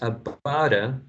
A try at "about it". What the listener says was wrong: So instead of this t, you should use a flap here.